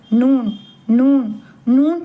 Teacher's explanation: நாக்கின் நுனி பகுதி முன் மேற்பற்களின் ஈரின் ஆரம்ப பகுதி லேசா தொட்டு குரல் மூக்கிலிருந்து வரவேண்டும். நூன் நூன் நூன் சொல்லும்போது மூக்கால பேசுற மாதிரிதான் லேசா இருக்கும்.